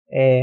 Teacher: 'ㅔ' 같은 경우는 혀를 약간 앞으로 내밀면서 'ㅔ' 하고 발음하게 되는 거죠